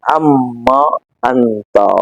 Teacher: نون و میم قریب مخرج سے، نون کو تبدیل میم کیا، میم کو میم میں ادغام کیا